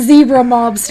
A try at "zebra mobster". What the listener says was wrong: Sounds like you're saying lobster.